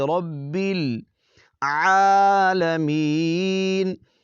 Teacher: عین کو حلق کے درمیانی حصے سے ادا کریں گے۔ یہ کوشش کریں کہ حمزہ کی آواز یہاں نہ نکلے، یعنی عالمین، عالمین اس طرح نہیں، عال، اس کی آپ پریکٹس کریں۔